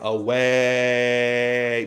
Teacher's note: you don't want to go to the diphthong too early you want to stay on the open vowel so in the case of away you want to stay on